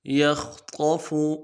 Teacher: لفظ یخطف میں خا کو موٹا ادا کرنا ہے، قا کو موٹا ادا کرنا ہے اور فا کو نرمی سے پڑھنا ہے